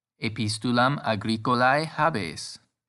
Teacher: That's right, the E in habeo tells us it will be habes with a long E